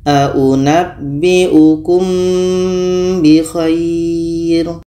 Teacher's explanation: ini ada mim mati bertemu B ini Ikhfa Syafawi kita dengungkan ketika kita sebut huruf mim kita sudah merasakan huruf ba